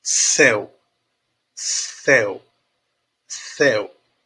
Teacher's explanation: o u da palavra céu ele se apoia na vogal e E aí ele aproveita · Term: semivogal